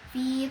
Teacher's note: fi terdapat mad thabiya maka dibaca panjang dua harakat